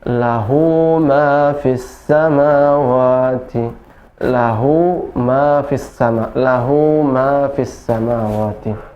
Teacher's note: Maka ketika ada ha dhamir yang seperti itu bertemu dengan huruf hijaiyah ya, selain huruf hamzah, maka dipanjangkan 2 harokat, namanya mad silah qasirah. Ha dhamir bertemu dengan huruf hijaiyah selain huruf hamzah, panjang 2 harokat.